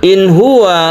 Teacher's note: nun mati disusul a ha. Kami menyebutnya izhar halqi. Halqi artinya tenggorokan.